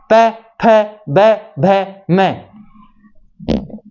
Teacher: इनका जब उच्चारण करेंगे ना हम, तो हमारे जो होठ है ना वो आपस में मिलेंगे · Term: प वर्ग